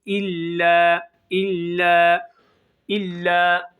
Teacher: bir Elif uzatıyoruz arkadaşlar çok tutmuyoruz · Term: Meddi tabii